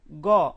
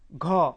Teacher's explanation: তারপর গ বাতাস স্বাভাবিক ঘ বাতাস জোরে বের হচ্ছে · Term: মহাপ্রাণ